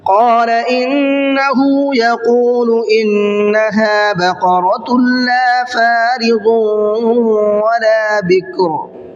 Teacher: قال انه يقول انها بقرة لا فارض ولا بكر، انه کے نون میں غنہ کرنا ہے، یقول کے قاف کو منہ بھر کے پڑھنا ہے